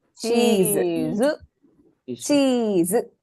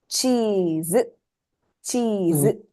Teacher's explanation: the first Chi is elongated